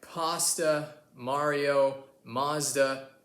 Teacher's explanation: So, in America, when it comes to words like pasta, Mario, Mazda, etc. we like the ah sound.